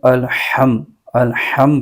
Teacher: हा को हलके दरमियानी हिस्से से अदा करना है इसके मखरे से अदा करना है और दुरुस्त अदा करना है